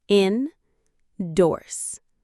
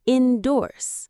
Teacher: The stress is on the second part, which makes it sound confident. Endorse. It rhymes with words like horse or force.